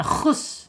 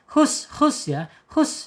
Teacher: Tenggorokan tengah ya secara makhraj, kemudian secara sifat di al-hams. Al-hams mengalir ya, mengalirnya napas ketika di ha ini sukun.